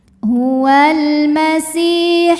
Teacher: Sebab ada ya sukun didahului baris kasrah. Maka sin panjang dua harakat. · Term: mad thobi'i zahiri